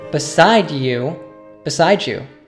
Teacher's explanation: in this sentence this is a common example of sound morphing when we have a word ending in a d followed by a word beginning with y like you they will often connect and the d plus y morphs to a j sound